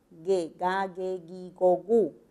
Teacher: el fonema velar, oclusivo velar sonoro